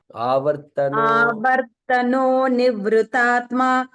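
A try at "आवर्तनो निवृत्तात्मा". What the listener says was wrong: Only small observation is in the first line, Avartano Nivrittatma. There is two ta there. Nivrittatmano.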